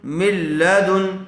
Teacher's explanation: لام اور را کی صورت میں بغیر غننے کے ملا کر پڑھیں گے